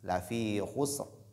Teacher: la lettre ra, elle est lue de façon emphatique à l'arrêt. Elle porte sukun.